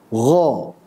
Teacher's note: ghain ini tebal ya seharusnya tebal Jangan ditipiskan dibaca dengan tipis seperti ghairil atau mungkin pernah dengar gha ya